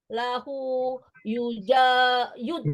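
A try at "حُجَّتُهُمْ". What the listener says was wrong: bukan juj, ha dulu tuh, ha baru jim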